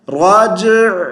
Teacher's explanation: جیم پر قلقلہ کریں گے اور عین کو ساکن کریں گے، زیر نہیں پڑھیں گے مگر قلقلہ بھی نہیں کرنا، راجع، راجع نہیں کرنا، تو صحیح کیسے پڑھنا ہے، راجع، ٹھیک ہے، عین کی آواز گلے میں چلتی جائے، راجع۔